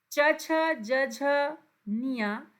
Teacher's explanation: यह आपके तालू से बोले जाते हैं